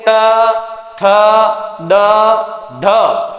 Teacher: जीभ का अग्र भाग दांतों को स्पर्श कर रहा है, इसी कारण इन्हें दंते ध्वनियां या दंते वर्ण कहा जाता है।